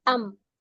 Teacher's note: merubah bunyi nun sukun menjadi mim sukun dari an menjadi am oh Oh ininya ya Oh iya ya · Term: iqlab